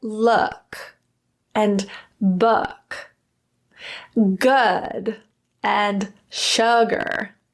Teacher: It's lower and more relaxed than ooh, ooh, ooh, and the lips are more relaxed as well. Ooh involves really rounded lips. · Think of it like rounding it 1 out of 10, like very little bit. The tongue position is lower than ooh.